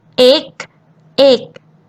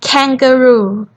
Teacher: The difference between G and K is G doesn't have wind, but K you have to have wind